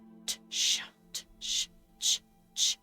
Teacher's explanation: And ch is just sh with a T.